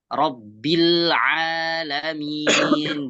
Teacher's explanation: tempat keluarnya huruf ain itu di mana? Di tenggorokan. Di tenggorokan tengah.